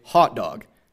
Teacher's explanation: And we in Boston will say hot dog. So that would be two rounded vowels. So both the Midwest and New England have merged their pronunciations of these vowels, but ours is just a rounded merger, and theirs is an unrounded merger, and then New York is kind of caught in the middle.